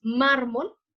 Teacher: la penúltima lleva la sílaba tónica, es la sílaba que más se escucha